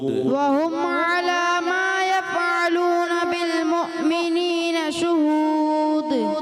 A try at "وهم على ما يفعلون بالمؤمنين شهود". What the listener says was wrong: یف فا کی ادائیگی کلیئر کریں گے وهم على ما يفعلون بالمؤمنين شهود